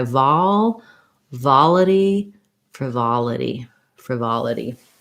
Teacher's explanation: frivolity um has second syllable stress that vol is just like in volume where we have an ah vowel so thinking about it like val vol this is an unstressed